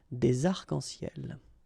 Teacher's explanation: we don't really pronounce this final S, so phonetically it's almost the same, but then we've got this liaison between the two